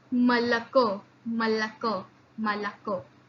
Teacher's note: when o is not stressed, it becomes almost the sound of a. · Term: vowel reduction